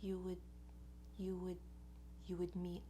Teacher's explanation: So the word you already has like a W sound at the end of it, and then you just do a little schwa. That's the tiniest, most relaxed, most reduced vowel that we have, very neutral, into the D.